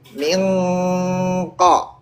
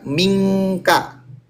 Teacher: Lidah belakangnya ikut naik. Mingko. Kalau K ang banget, angnya Indonesia.